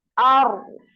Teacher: yang mengalir getarnya sekali aja. Jadi seperti ada remnya, seperti di rem getarannya, Ar, kemudian suaranya yang ngalir, ya. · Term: pola kedua